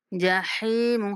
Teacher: جحیم ہا کے بعد جائے مدہ ہے تو ہا کو کھینچنا ہے